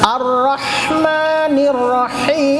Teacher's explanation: یہاں بھی ہا، یہ حلق والی ہا ہے۔ رحمان اور رحیم دونوں ہا یہ حلق کے بیچ سے تھوڑا سا بجا کے